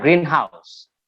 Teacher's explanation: here we have greenhouse and stress is on green